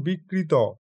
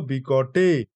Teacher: ত ধ্বনিটি সতস্ফূর্তভাবে মূর্ধন্য ধ্বনিতে পরিণত হচ্ছে।